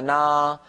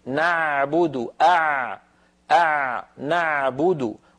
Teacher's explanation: من جملة ذلك عين كلمة نعبد، لا تنطقوها بارك الله فيكم عالية نعبد هكذا نا، بل هي أعمق قليلا. العين الفصيحة أعمق من العين التي تعودنا في العاميات أن ننطقها.